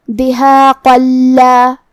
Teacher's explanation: ہم یہ آیت کو اگلی آیت کے ساتھ ملا کے پڑھے تو جو کہ حرف اللام حروف الادغام بغیر غنہ میں سے ہے تو ہم یہ تنوین کو لام میں ملا کے بغیر غنہ کے لیکن تشدید کے ساتھ یہ حکم کو ادا کریں گے